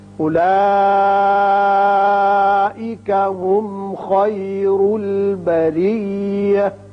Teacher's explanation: خیر را پر ہوگا، بریہ میں را باریک ہوگا اور تا یہ ساکن ہو کر ہا کی شکل اختیار کرے گی